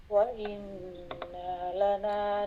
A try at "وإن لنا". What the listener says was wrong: Try not to stretch the noon. وإن لنا. وإن, not وإنا, but وإن.